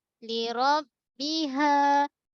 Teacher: Ha bulat pangkal kerongkong. 2 harakat mat asli.